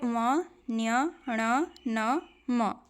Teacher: पांचों को आप बोलेंगे तो आपको लगेगा नाक से बोल रहे हैं · हवा के नासिका मार्ग से निकलने से नासिक्य ध्वनियां